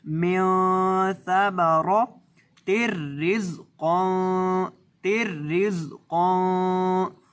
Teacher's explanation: نون کی آواز کو ناک میں لے جا کر پڑھیں گے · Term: گنہ